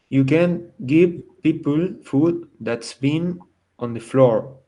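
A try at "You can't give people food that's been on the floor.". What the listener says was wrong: I can't hear the difference between can and can't. So the trick here, you have to say it longer. Can't. And then remember Barbie can. Barbie can. Positive. But can't.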